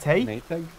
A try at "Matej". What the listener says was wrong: No, it's not egg. It's not egg. It's a J, not a G.